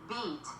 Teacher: the mouth is tense, almost smiling, with the tongue slightly arched. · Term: long I sound